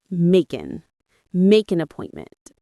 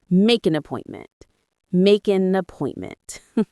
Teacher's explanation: Notice how those first two words, make and an, link together in American English. We don't say make an with the hard stop.